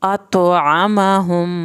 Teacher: यहाँ पर तो का गलगला करें, आइन को हल्क से पढ़ें। अतआमहुम, मीम की शत पे देर लगाएं एक अलिफ के बराबर।